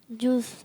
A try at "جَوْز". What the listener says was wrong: جوس. انہوں نے ویسے جوس کہا ہے, لیکن جو اس کا درست تلفظ ہے وہ جوزن ہے, جیم کے اوپر زبر ہے, جوزن. جوس تو نہیں ہے, سردیاں چل رہی ہیں, ویسے بھی جوس تو نہیں پینا چاہیے, انہوں نے جوس کہا ہے, لیکن جوز ہے.